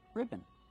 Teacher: And the second syllable is not stressed. It's relaxed and close.